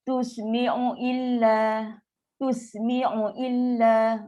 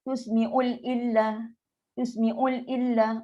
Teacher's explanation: Baca laju, tak sempat bagi harakat mat asli, dia terus. Dia jadi ada penambahan huruf lam. Sebab lam kita dah tahu sifat dia senang tergelincir.